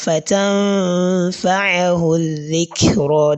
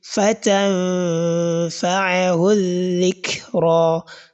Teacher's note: during the course of the nasalization, you are going to indicate the articulation point of letter fa, which is on the lower lip. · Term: ikhfa